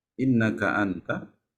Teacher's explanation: Kalau nun sukun bertemu huruf ta, tajwidnya apa? Innaka anta. Ikhfa. Nah, kalau ikhfa ya ditahan